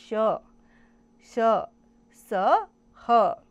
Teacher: इन वर्णों के उच्चारण में हवा के रगड़ खाने से मुख में गर्मी, ऊष्मा उत्पन्न होती है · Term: ऊष्म व्यंजन